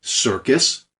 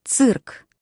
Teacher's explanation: we say circus with an S sound but Russian interprets it as a TS sound